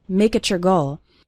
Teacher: And you can see something funny happening with the words make it your. When we have a word ending in T, followed by the word you or your, it often sounds like a CH sound, ch. So make it your goal sounds like make it your goal.